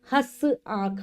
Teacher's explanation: में लगता है और इसका जब हम प्रयोग करते हैं तो जो हमारी सांस है वो नाक से भी निकलेगी हल्की सी और मुख से भी निकलेगी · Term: अनुनासिक